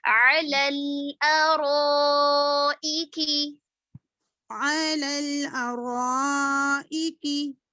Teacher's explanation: رو کو پر کریں گے, الف بھی پر ہوگا.